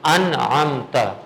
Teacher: ما قبل نون ساکن آ گیا تو اظہار کا قاعدہ لگے گا، نون کی ساؤنڈ کو ہم ظاہر کریں گے نہ کہ چھپائیں گے